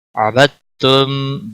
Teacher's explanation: دال یہاں نہیں پڑھا جائے گا. عبدتم کیونکہ ساکن حرف کے بعد جب تشدید والا حرف آتا ہے تو پچھلا حرف حذف ہو جاتا ہے.